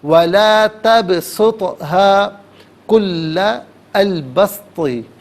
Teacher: دونوں کے دونوں حروف قلقلہ ہے تو یہاں پر آواز دونوں مقامات پر لوٹتی ہوئی محسوس ہونی چاہیے